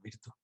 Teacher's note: Por lo tanto, yo hablaré siempre de virtud en el sentido italiano y además lo pronunciaré como lo hacen los italianos, virtud, con la V labiodental, que se nos ha perdido a nosotros esa pronunciación